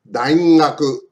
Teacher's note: So when the consonant G in ga, gi, gu, ge, and go comes at the beginning of a word, 最初からが as in gakusei, it sounds like the G in English, garden. But when the G is in the middle of the word, for example, daigaku, its sound is very close to NG in the English, sing. So, daigaku じゃない、daingaku.